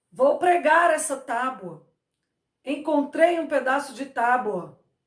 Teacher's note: a palavra que é escrita com a letra u sai com som de o